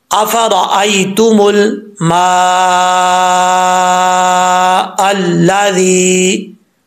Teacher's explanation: मद्दे मुत्तसिल है तो तीन से साढ़े तीन अलिफ के बराबर लंबा कर सकते हैं